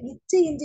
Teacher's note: நாவின் இடைப்பகுதி நடு அன்னத்தின் இடைப்பகுதியை பொருந்துவதால் பிறக்கும் எழுத்து